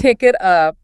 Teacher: The K sound slides into the A, the T slides into the O.